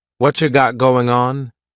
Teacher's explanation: What cha is what plus you. You becomes cha.